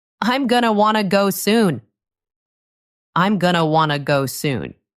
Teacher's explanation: The words all connect together. They flow into each other. Going to becomes gonna. Want to becomes wanna. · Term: connected speech